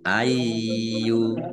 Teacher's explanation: Y-nya dibaca dobel ada tasdidnya dibaca ai dulu. · lamnya dibaca double, ada tasdidnya. Nah, zal kasroh ya sukun, mat tobi'i, panjang 2 harokat.